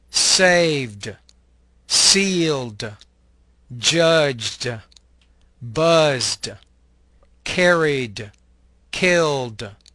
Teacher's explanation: the E ending is pronounced as a D sound without creating an additional syllable